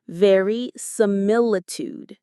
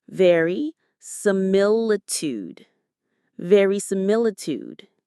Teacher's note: The main stress is on that third syllable from the end. Mil. Verisimilitude.